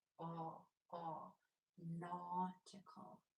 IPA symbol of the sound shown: ɔ